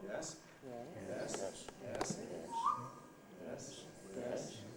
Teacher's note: the low rise which starts at the bottom goes to the middle